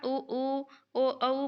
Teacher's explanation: आप आईना में कभी देखना ऊ ओ औ बोलते हुए आपका जो होंठ है वो गोल दिखेगा।